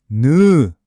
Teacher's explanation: 혀끝이 지금 어디에 닿아 있나요? 그렇죠. 윗니 바로 뒤쪽 잇몸에 착 달라붙죠? 느는 바로 그 혀끝의 모양을 그대로 가져온 겁니다.